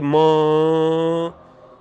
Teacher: You have air coming through the both oral and nasal passage. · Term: nasal sounds